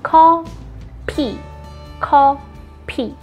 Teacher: You have to pronounce F like P because we don't have F sound in Korean.